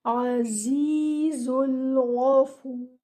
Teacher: عزيز Ayn should be from its makhraj. Z should be given 2 counts with the buzzing sound in it. · Your ra at the end should be heavy.